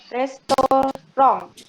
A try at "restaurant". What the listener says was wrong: Restaurant. Oke, betul.